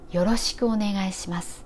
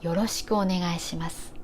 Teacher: よ and su are low. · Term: pitch